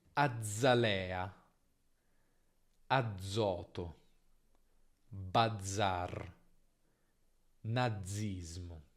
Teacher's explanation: Quando abbiamo una sola Z tra due vocali, come azzalea, azoto, bazar, nazismo. Nota che la Z qui comunque si pronuncia lunga, anche se se ne scrive una soltanto.